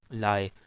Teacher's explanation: Once again, there will be no complete closure. There will be incomplete closure on both sides of the tongue and roof of the mouth. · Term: lateral approximant